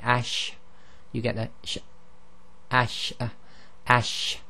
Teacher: when you say ash, you'll feel the air sort of spreads on all sides of the tongue and forward through the front of the mouth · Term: sheen